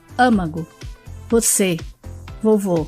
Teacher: o acento circunflexo representa as vogais fechadas